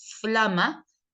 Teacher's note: Cuando yo digo flama, primero participa labio y diente para la F